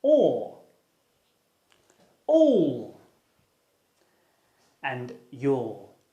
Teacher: your tongue is low and at the back of your mouth rounded refers to your lips because they are pushed together like you're going to kiss someone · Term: open mid back rounded vowel